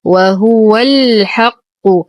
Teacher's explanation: وهو، لدينا ها ضمير توصل بواو مدية بمقدار حركتين صلة صغرى. وهو الحق، ننتقل من فتحة الواو إلى إسكان اللام القمرية